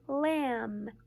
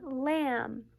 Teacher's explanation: the B is silent. So all you will hear when you see M and B together is you will hear the M.